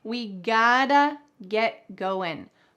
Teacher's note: You can pronounce this gotta. In American English, the T changes to a D.